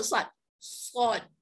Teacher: Mula-mula ujung lidah letak pada belakang gigi depan, di bawah, gigi depan bawah.